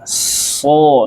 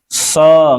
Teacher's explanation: suaranya dibawa ke dalam, otomatis si pangkal lidahnya itu naik sendiri